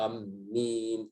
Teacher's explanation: Karena amin ada mad lazim lebih kuat. Maka dibacakan dengan 6 harakat.